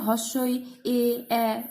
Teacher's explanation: এগুলো উচ্চারণের সময় জিভটা সামনে থাকে, তো তাই এগুলোকে আমরা সম্মুখ স্বরধ্বনি বলতে পারি